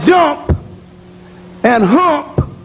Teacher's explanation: So when you hear punk or MP like jump and hump, that M and P, one is voice and P is voiceless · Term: heterogeneous voicing